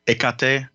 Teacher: with especially greek pronunciations it being like the h kind of gets dropped a little bit it becomes more of like a ekate kind of a thing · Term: dropping of the h